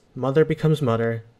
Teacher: irish english and newfoundland english have in common is dropping the th sounds in words